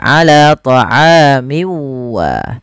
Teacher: masukkan tanwinnya ke huruf waw, kemudian dirubah suaranya menjadi huruf waw. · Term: idgham bi gunnah